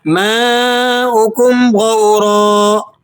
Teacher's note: ماؤکم یہاں پر الف مدہ پر آپ 3 سے 4 الف اسے کھینچ لیں گے، حروف مدہ ہے اور اس پر مد بھی لگا ہوا ہے، تو اسی صورت میں جب حروف مدہ اور حمزہ دونوں ایک کلمے میں جمع ہوں تو مد متصل واجب ہوتی ہے اور اس کی مقدار 4 الف ہے۔